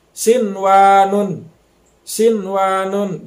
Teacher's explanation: Nah, di sini nun mati ketemu dengan wau. Walaupun nun mati ketemu dengan wau, tapi dibacanya jangan dimasukkan, jangan sampai siwanun gitu. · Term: idhar mutlak